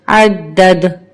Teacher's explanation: اب یہاں پہ یہ والی دال مشدد ہے، اس کو سختی سے پڑھیں گے اور اس والی دال پر ہم وقف کی صورت میں ہماری آواز پلٹ کر آئے گی کیونکہ یہ حروف قلقلہ کا حرف ہے